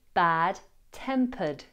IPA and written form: ˌbædˈtempəd (De mauvaise humeur)